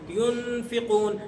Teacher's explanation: اب یہاں ناک میں آپ کی آواز جائے گی، ناک میں یہاں پر آپ کی آواز جا رہی ہے، لیکن آپ کی زبان تالو کے ساتھ نہیں چپکے گی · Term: اخفا